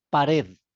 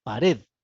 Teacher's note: la A es átona y la tónica es la E